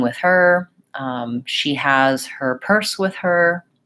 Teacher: if I'm saying with her, I basically have to stop a little bit between those two words. I can't really glide them very well, link them very well.